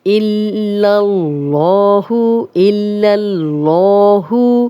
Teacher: लाम पे शद है, लाम 2 बार पढ़ा जाएगा, एक दफ़ा हमज़ा की ज़ेर के साथ, एक दफ़ा अपनी हरकत के साथ, और लाम की ज़बर फिर अल्लाह के लाम के साथ मिलेगी। · और जब भी अल्लाह और अल्लाहुम्मा का लाम हो और पीछे ज़बर या पेश हो तो लाम मोटा पड़ा जाता है। ये लाम हम मोटा पढ़ेंगे